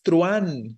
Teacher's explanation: tanto no se tilda vale entonces no es truan es truan la a es la que suena fuerte y por esa razón truan es monosílabo porque tenemos diptongo